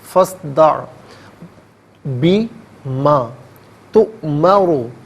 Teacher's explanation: حمزہ ساکن ہے، اسے جھٹکے کے ساتھ پڑھیں گے